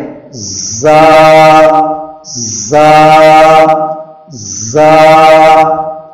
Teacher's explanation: تو ہم جب را کے بعد زا ادا کریں تو زا میں تھوڑی سختی اور سیٹی کے ساتھ ادا کریں